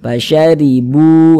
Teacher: Bu dibaca panjang, mad tabi'i panjangnya 2 harokat.